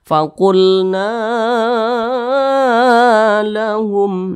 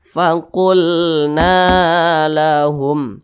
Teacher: panjangnya dua harakat atau kira-kira dua ketukan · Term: Mad Thobi'i